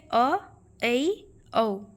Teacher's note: इनके उच्चारण करते समय मुख आधा खुला रहता है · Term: अर्धविवृत